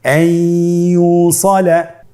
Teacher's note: ইয়া হরফটি হলো ইদগামে বাগুন্নার হরফ। তাহলে নুনকে আমরা পরবর্তী হরফ ইয়ার সাথে মিলিয়ে গুন্নার সহিত পড়ব।